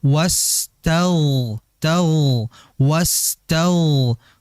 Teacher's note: ada sin sama ghain itu dialirkan wastag wastag.